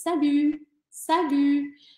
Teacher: aqui tem o biquinho do francês salut salut coloca o dedinho aqui ó no cantinho da boca